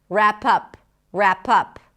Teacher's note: Stress on pup.